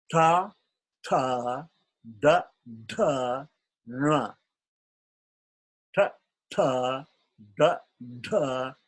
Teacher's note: the tongue is folded back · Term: cerebral